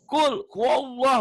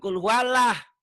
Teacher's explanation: Kalau sebelum lafaz Allah baris di atas, berarti tebal, bunyi O.